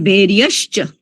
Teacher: એમાં ભૈર્યસ્ચ ભૈર્યચ અને ભૈર્યહ ચ પણ બોલવામાં એમાં ચ છે ચ વર્ણ જે છે એ તાલવ્ય છે એટલે એટલે શંકરનો શ થશે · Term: તાલવ્ય શ